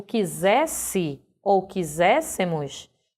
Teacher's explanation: escritos com apenas um S, porém pronunciados com o som de Z